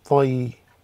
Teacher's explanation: Ya with the sukun creates a diphthong, tai, and the ra with the kasratain is tairin, tairin.